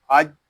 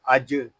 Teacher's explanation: ہو رہا ہے نون زبرنا ان الذین حمزہ جیم زبر اج جیم ساکن ہے اس میں قلقلہ خوب ظاہر کریں گے